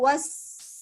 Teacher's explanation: Sifatnya as-sofir. Kasauti sofir. Seperti suara burung, katanya.